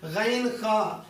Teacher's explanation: غین خا منہ والے حصے سے ادنا حلق سے نکلتا ہے